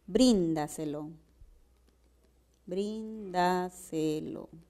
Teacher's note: la mayor fuerza de voz recae en la trasantepenúltima sílaba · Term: sobresdrújula